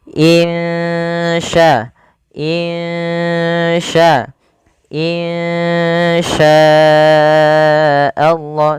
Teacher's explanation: samarkan suara nunnya kepada huruf sya. Insya, insya, insya Allah, sambil ditahan 2 harokat. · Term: ikhfa hakiki